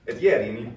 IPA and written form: jɛri (ieri)